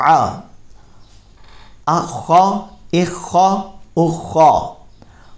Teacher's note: خا حروف مستعلیہ میں سے ہے، اس کو پر پڑھیں گے.